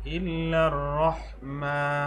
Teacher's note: যদি থামি তাহলে খারা জবরটা তিন আলিফ পরিমাণ টানতে হবে